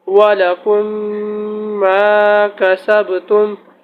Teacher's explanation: واو زبر و، لام زبر ل، ولا، کاف میم میم پیش کن، ولکم میم الف زبر ما، کاف زبر کا، ما کا، سین با زبر سب، ما کا سب، تا میم پیش تم، ما کا سب تم، ولکم ما کا سب تم۔ میم ساکن کے بعد دوسری میم آ رہی ہے، اس لیے ادغام شفوی ہوگا۔